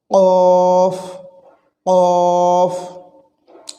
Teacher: কলকলা বলে এই হরফটিকে ধাক্কা দিয়ে উচ্চারণ করতে হয় বলতে কফ জিহ্বার গোড়া তার বরাবর উপরে তালুর সঙ্গে লাগায় এই হরফটি উচ্চারণিত হয়